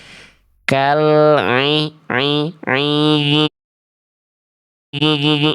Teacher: Huruf ainnya ada dengungnya. Huruf ainnya bindeng, huruf ainnya masuk ke dalam rongga hidung. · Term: sengau